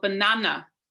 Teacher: stress one particular syllable in a word so for example banana so we stress the second syllable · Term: word stress